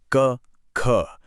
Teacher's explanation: महसूस कीजिए कि जीभ का पिछला हिस्सा गले में नर्म तालु को छू रहा है। इन्हें कहते हैं कंठ ध्वनियां।